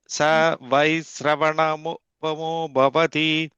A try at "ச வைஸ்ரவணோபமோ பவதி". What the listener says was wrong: நோ சொல்லுங்க. நீங்க நோ மட்டும் சொல்ல மாட்டேங்கிறீங்க. அது மட்டும் சொன்னா வந்துடும். ஓன் அக்ஷரமா சொல்லுங்க. ச வைஸ்ரவணோபமோ பவதி.